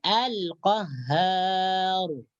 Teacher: ketika kita mewakafkan ra, maka ra di sini kita baca tebal atau tafkhim